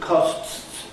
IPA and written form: kɒsts (costs)